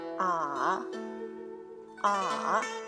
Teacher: You need to start pretty high and drop it to the bottom and rise again. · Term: third tone